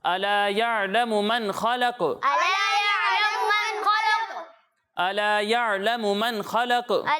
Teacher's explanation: قاف ساکن ہو جائے گا, تو قاف میں آواز لوٹتی ہوئی محسوس ہونی چاہیے. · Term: قلقلہ